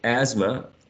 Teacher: the sound interdental, voiceless, is not pronounced